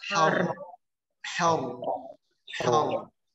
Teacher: ro-nya sukun, dibaca dengan suara tebal